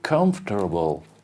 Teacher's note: And in the US, they'll say comfortable. They'll add an R, you can see an R.